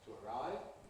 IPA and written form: tu əˈraɪv (to arrive)